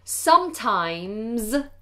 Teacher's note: the S on the end of the word sometimes is pronounced like a Z. So make that more voiced Z.